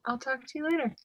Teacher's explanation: the C Sound is unreleased as it transitions to the T sound sound T So this means that there's no puff of air